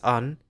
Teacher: Word-finally, the sequence /ən/, which appears frequently in the language, is often pronounced /ə/, especially by younger speakers.